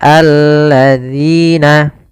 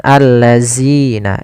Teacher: dengan ujung lidah kita menempelkan dengan gigi sari atas. Zi. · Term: zal